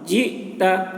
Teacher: حمزہ ساکن ہے، حمزہ میں جھٹکا لگے گا